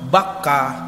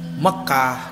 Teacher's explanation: kalau ini Ar aroma aramaik b-nya jadi mim aroba janten aroma karena B dan mim satu artikulasi di bibir satu makhraj sigah dulu kota Makkah itu bernama bakkah ke sininya jadi Makkah